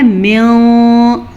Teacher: ہم نون ساکن یا تنوین کو چھپے ہوئے غنّے کے ساتھ پڑھیں گے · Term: اخفا